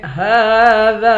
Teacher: ہا اور دال دونوں کو ایک الف کی مقدار کھینچ کر پڑھیں گے